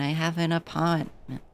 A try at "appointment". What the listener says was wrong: Apartment? No, that sounds too much like you're saying apartment in a Boston accent.